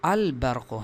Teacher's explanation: جیسے آپ اس مثال میں دیکھ لیں البرق، تو یہاں اسم کی ابتدا میں لام الف لام آیا ہے اور اس الف لام کے لام کے بعد با آیا ہے جو کہ ان 14 حروف میں سے ہے، لہٰذا اس لام میں اظہار کیا جائے گا، یعنی لام کو با میں مدغم نہیں کیا جاتا بلکہ اس کو ظاہر کر کے پڑھا جائے گا